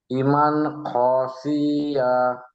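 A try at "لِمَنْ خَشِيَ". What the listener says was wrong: মাশাআল্লাহ, খুব সুন্দর পড়েছেন, কিন্তু টানটা একটু টান বেশি হয়ে গেছে, পড়বো কেমন, লিমান খসিয়া। জি, কোন রকম টান দেওয়া যাবে না, লিমান খসিয়া। জি, এখন এখানে নুন সাকিনের পরে কোন অক্ষর এসছে জি? আচ্ছা, তানবিন নয় জি, নুন সাকিনের পরে খ এসছে, যে হরফে হালকি 6টি অক্ষর, হামজা হা আইন হা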